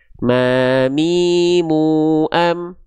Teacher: Cukup kita lafalkan huruf M pada abjad alfabet, beres. Yaitu dengan cara menyentuhkan bibir atas bibir bawah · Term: huruf mim